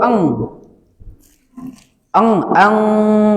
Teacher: Kemudian nun sukun ketemu qof didengungkan ya. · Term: ikhfanya